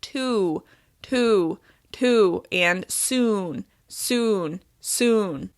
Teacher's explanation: adding the shape of the w to the end of this vowel makes it clear what vowel sound I'm using · we add the shape of the w onto the end of this vowel sound